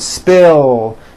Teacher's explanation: Spill ends with a voiced L sound